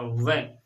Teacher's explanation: और दंत ऊपर का क्या होते हैं सक्रिय होते हैं यानी यह ऊपर के दंत और नीचे के होस्ट से बोला जाता है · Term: दंत और होस्ट, दंतोष्ठ